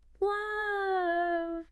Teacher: I can feel the tip of the tongue flicking off the roof of the mouth. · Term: clear L